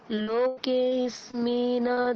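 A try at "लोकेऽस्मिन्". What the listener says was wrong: লোকেস্মিন না, এরকম না ম্যাডাম, লোকেস্মিন হসন্ত আছে, তাহলে অকারটা আমরা মানে অকারের প্রোনাউন্সিয়েশনটা হবে না। লোকেস্মিন অকার নেই না? লোকেস্মিন এভাবে বলুন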